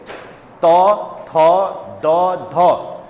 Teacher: त थ द ध उच्चारण करो तो क्या आपकी जीभ दांत को टच कर रही है